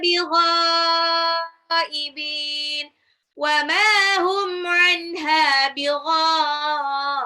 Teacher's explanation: Ghainnya itu panjang, mat wajib mutasil.